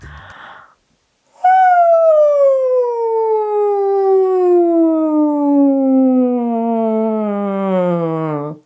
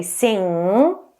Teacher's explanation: an NG sound, which is airflow into the nose